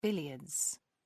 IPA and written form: ˈbɪljədz (billiards)